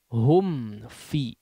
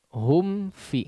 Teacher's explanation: Itu yang biasanya menyebabkan ya mim sukun bertemu dengan fa atau waw ya, sehingga menjadi seperti ikhfa ya. Selesaikan dulu mimnya, rapatkan betul-betul, sempurnakan hum fi. Di sini izhar ya, izhar.